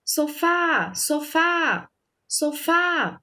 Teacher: o Fá, ele saiu com mais intensidade no som e ele se prolongou um pouco mais na sua sonoridade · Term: sílaba tônica